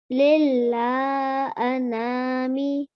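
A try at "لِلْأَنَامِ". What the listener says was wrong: Okay, so there's no extra lam here. It's just 2 lams.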